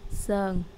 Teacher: if we extend the u sound and shorten the n sound it sounds like sơn